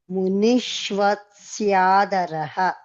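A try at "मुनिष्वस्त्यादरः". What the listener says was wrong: మధ్యలో తకారం మిస్ అయ్యారు. మునిష్వస్త్యాదరః.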